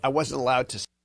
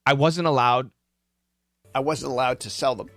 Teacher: And you hear that D, right? Almost like a T.